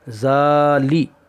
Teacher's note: لام کے نیچے زیر ہے، زیر کی آواز نیچے کو جاتی ہے اور کھینچ کر نہیں پڑھیں گے۔